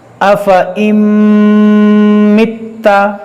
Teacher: اور تا مشدد ہے، اس کو پڑھیں گے 2 بار